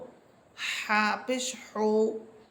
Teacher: জিমের মতো হা, এটির মাখরাজ হচ্ছে কণ্ঠনালীর মধ্যখান।